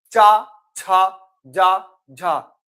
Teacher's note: देखो कहां पर आपकी जीवा कहां टकरा रही है? ठीक है, तालु में।